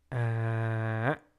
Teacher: you immediately cut off the sound by closing your vocal cord very very strongly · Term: low falling broken tone